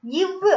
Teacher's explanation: மேல்வாய் பல்லை கீழ் உதடு பொருத்துவதால பிறக்குது